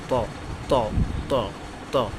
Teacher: জিহ্বার আগা সামনের উপরের দুই দাঁতের গোড়ার হতে উচ্চারিত হয় ত